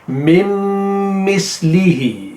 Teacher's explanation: مم مثلہ میں میم کے بعد پھر میم ہے اور جو دونوں میم ہیں ان کے درمیان میں نون ہے اور نون جو ہے وہ سائلنٹ ہے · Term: مدغم